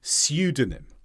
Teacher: in the United Kingdom it's more likely to be pseudonym where there's a y sound before the U in America that sound isn't there and this is a fake